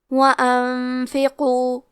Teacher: حرف القاف کی ادائیگی زبان کے جڑ اور تالو کے نرم حصے سے ہے. قاف حروف التفخیم میں سے ہے، تو ہم یہ حرف کو موٹی آواز میں پڑھیں گے. · کلمت انفقو میں نون ساکن ہے، پھر حرف الفا ہے، یہاں حکم ہے اخفاء، تو ہم یہ حکم کو غنہ کے ساتھ ادا کریں گے. وَأَنفِقُوا حرف القاف کی ادائیگی زبان کے جڑ اور تالو کے نرم حصے سے ہے.